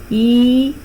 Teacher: E, as I said, we will describe it as close itself. Front, close, unrounded vowel.